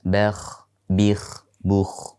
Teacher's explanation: Kha diucapkan dengan menggetarkan dan disertai aliran nafas.